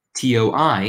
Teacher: So toi, T-O-I, has that wa sound, whereas tu is different.